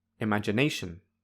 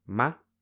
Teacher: Finally, when I say ma, the level of loudness, highness, and length feel in between primary and zero stress. So, ma has secondary stress.